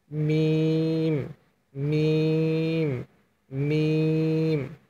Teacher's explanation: আর শুকনা অংশ থেকে মিম হরফটি, দুই ঠোঁটের দুইটা শুকনা অংশ একসাথে লাগিয়ে রেখে মিম হরফটি উচ্চারণ করবেন,